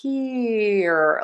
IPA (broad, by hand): ˈpɪr.i.əd